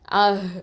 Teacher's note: இந்த ஹக்கு வந்து என்ன பண்ணணும்? ஹம்ஸ் பண்ணணும்